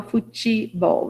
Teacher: a gente acrescenta um E na escrita, na fala a gente fala futebol, né, como se fosse um I, é um E fraco